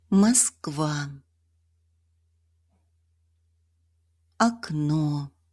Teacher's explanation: Unstressed O is pronounced as a short, unrounded A.